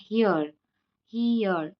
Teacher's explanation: For example यहाँ पे ये सिंबल है, इसका प्रोनाउंसिएशन होता है हियर. हीयर मतलब यहाँ पे ई भी आ रहा है एयर भी आ रहा है, दो साउंड आ रहे हैं हमें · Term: डिप्थोंग्स